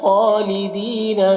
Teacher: خالدین میں خا کو پر پڑھنا ہے اور کھڑا زبر ہے، ایک الف کے برابر کھینچ کر پڑھیں گے